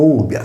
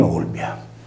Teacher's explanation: con l'apertura della vocale /u/ in /o/, è risolto in Olbia